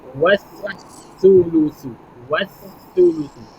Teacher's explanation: kita tak perlu lafaz maksudnya tak perlu sebutlah lam tersebut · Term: alif lam syamsiah